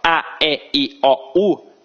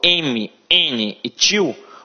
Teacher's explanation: quando eu falo A, E, I, O, U, eu falo apenas com a boca. Isso é uma estrutura oral.